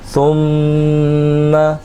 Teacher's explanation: میم کی آواز میں جو غنہ ہو رہا ہے اس کو کھینچیں گے